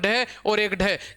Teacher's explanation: उद का अर्थ होता है उठना, सिप्त का अर्थ होता है गिरना, कि वे वर्ण जिनका उच्चारण करने पर अपनी जीवा ऊपर उठकर झटके के साथ नीचे गिरती है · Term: उत्सित व्यंजन